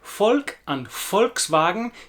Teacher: the V sound at the beginning of the word Volk and Volkswagen is very much like an English F